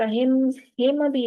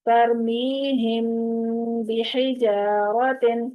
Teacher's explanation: میم ساکن کے بعد با آئے گا تو وہاں پر میم کی آواز خفی ہو جائے گی، وہاں پر اخفا ہو جائے گا. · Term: اخفاء شفوی